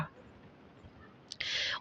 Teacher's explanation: बगल बगल से वायु निकलती है